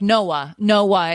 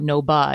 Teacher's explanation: there's two vowel sounds next to each other and you pronounce both of them and there's no consonant. It's not no ba, it's no uh. · With a vowel hiatus, you are pronouncing each vowel sound in there.